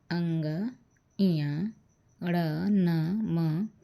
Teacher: क ख ग अंग अंग का उच्चारण कंठ से तो हो ही रहा है लेकिन नाक का भी उसमें प्रयोग है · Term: अनुनासिक